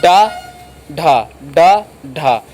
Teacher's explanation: ऊपर वाला भाग क्या होता है, तालु होता है। तो आपकी यह जिह्वा है और यह जब ऊपर के तालु से टकराती है, ऊपर वाला भाग क्या होता है, तालु, और ये बहुत जल्दी छूकर वापस आ जाती है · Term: उच्छिप्त